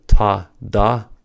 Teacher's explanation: For the ta, da pair, the stop happens at the tooth ridge, which is also called the alveolar ridge. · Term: plosives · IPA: /t, d/